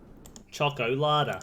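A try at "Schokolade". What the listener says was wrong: Yeah, German, it's just pronounce the E's at the end. Exactly the same word, just pronounce the E's.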